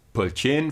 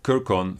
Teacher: note the systematic reduction of Latin pretonic full vowels to schwa in Albanian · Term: pretonic vowel reduction